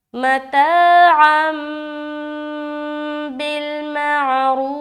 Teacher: गुन्ना करते हुए फिर थोड़ी सी नाक से ऐसी आवाज़ आएगी